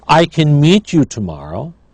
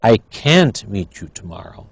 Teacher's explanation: notice when it's negative it is stressed we hear can't but in when it's positive we don't I can meet you